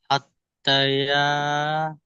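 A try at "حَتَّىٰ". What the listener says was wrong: হাত্তা, হাত্তা না, হাত্তা, ইয়াটা বাদ যাবে, তা খাড়া যাবে, তা, হাত্তা।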